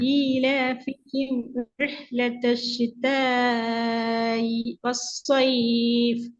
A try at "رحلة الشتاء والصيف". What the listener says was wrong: إي என்றது தெளிவா வரணும். நீங்க என்ன செய்றீங்க என்றால் பாருங்க, இந்த இடத்துல நீங்க பிரேக் பண்றீங்க. இ வஸ்ஸைஃப் நிற்பாட்டி ஓதுங்க, இது பிழை. இந்த இடத்துல தான் தெளிவான வித்தியாசத்தை எடுக்கணும், வேறுபாடு எடுக்கணும். அலிஃபுக்கு முன்னுக்கு, பின்னுக்கு எடுக்கப்படாது.